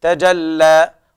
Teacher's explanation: والنهار إذا تجلى، وكذلك الجيم لابد من بيان الشدة فيها، والتاء كذلك، تجلى، والألف الأخيرة يوقف عليها بمقدار حركتين مدا طبيعيا